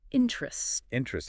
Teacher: I say interest with the emphasis on the second syllable